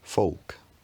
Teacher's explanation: a glottal stop appears before a word final k in certain dialects of English in the southeast